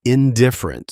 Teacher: Indifferent stresses its second syllable on I. And semantically it's doing important work in the sentence.